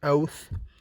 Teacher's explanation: The dental sounds are produced by touching the upper front teeth with the tip of the tongue